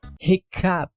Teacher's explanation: The right pronunciation is “hiccough” —which goes from the “F” sound to a “P.”